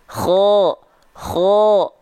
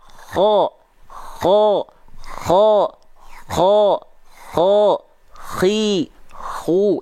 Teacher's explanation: Seperti dengkuran sedikit. Kenapa? Karena dia dilafalkan dari ujung tenggorokan. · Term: huruf kho